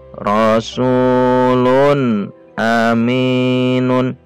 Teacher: nun sukun atau tanwin bertemu hamzah tidak boleh dibaca dengung, harus dibaca jelas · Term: izhar